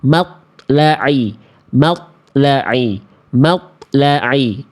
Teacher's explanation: Kesalahan yang sering kali terjadi ketika kita melafalkan huruf to dalam kondisi sukun adalah, ya, poin 1, dilafalkan dengan tidak memantulkan suara